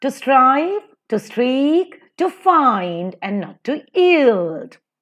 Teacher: to is unstressed, strive is stressed. So, to strive, to seek, unstressed and stressed, to find, unstressed and stressed, and not, unstressed and stressed, to yield, unstressed and stressed. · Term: iambic